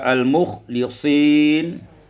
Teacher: Pada ayat 40 al-mukhlasin, dibaca dengan kasrah lam, kasrul lam, sehingga kita baca al-mukhlisin